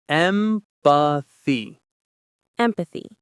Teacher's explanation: The stress is on the first syllable, M. Listen to how the th sound is made. Your tongue gently touches behind your front teeth.